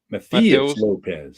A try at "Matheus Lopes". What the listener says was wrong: Mateus Lopes. Lopes. The H is silent.